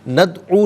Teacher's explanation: دال ساکن ہے لیکن حرف قلقلہ ہے تو آواز لوٹتی بھی محسوس ہونی چاہیے